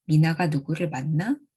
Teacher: a yes-no question reading is easily distinguished by the sharp rising contour at the end of the sentence